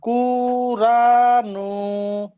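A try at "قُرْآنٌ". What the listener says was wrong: কুর আনুন। রা টান দেওয়া যাবে না, আটা টান। জি, নুনও টান দেওয়া যাবে না, কুর আনুন। নুন। নুন দু পেশ নুন। কফের উপর পেশ আছে।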